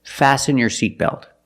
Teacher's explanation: Fasten is a verb, and the T is silent.